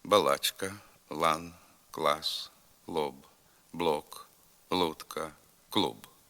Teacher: літературний л передньоязиковий твердий приголосний але не дуже твердий